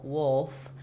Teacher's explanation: the classic dark L, where the front of the tongue doesn't lift, where you can make this sound just by creating the shape with the back of the tongue.